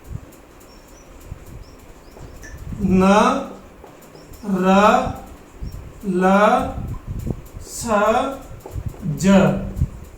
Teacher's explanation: न, र, ल, स, ज, ये 5 व्यंजन है, ये वर्तस्य व्यंजन के नाम से जाने जाते हैं।